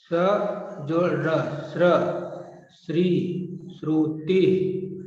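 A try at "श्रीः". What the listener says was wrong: Shrihi. Shrihi. Shrihi. Visarga is there. Shrihi.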